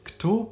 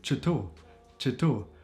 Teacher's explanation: In Kosovo you hear a lot of words starting with ch instead. So this is typically Kosovo Albanian. Like for example instead of ku for here they also say chu chu.